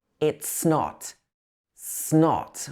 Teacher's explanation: It's and not blend together. These join together, it becomes, it's not.